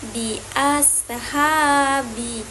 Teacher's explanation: Nah, hukum bacaannya yaitu mat tabi'i. Nah, mat tabi'i ini berharokat fathah bertemu dengan alif, maka dibaca panjang 2 harokat